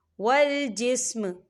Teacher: وقف کی صورت میں میم جو ہے وہ ساکن ہوگا